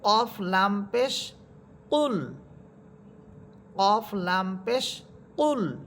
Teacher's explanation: কফের মাখরাজ ছিল জিব্বার গোড়া উপরে তালুর সাথে লাগবে